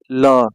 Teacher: जब आप बोलेंगे ल को ना, तो जीभ का अगल बगल का भाग जो है टकराएगा। जैसे ल, देखिए कंपन हो रहा है कि नहीं अगल बगल के भाग में। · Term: पार्श्विक व्यंजन